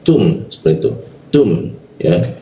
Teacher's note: huruf ta itu ketika dibaca ee sedikit seperti ada hembusan udarnya